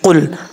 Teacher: ये जो क़ाफ़ है क़ाफ़ रूफ़ मुस्तालिया में से है, पुर पढ़ा जाएगा।